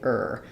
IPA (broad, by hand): ɚ